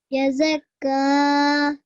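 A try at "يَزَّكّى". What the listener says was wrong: Okay, we need to practice on your thin sounds. This bar carries a tashdid.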